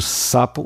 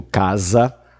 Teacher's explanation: quando eu digo sapo, o S não tá vibrando, mas quando eu digo casa, lá entre as vogais, ele tá vibrando